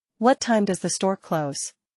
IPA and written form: wʌt taɪm dʌz ðə stɔːr kloʊz (What time does the store close?)